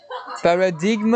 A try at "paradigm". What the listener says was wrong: Did you say a G? Oh, the G is, pretend it's not there. Yeah, we say paradigm.